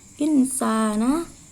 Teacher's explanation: Cara membacanya samar dengan dengung dan ditahan selama 3 harokat. Pada waktu mengucapkan kalimat nun mati, perilaku lidah dan bibir dipersiapkan menempati huruf sin. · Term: ifat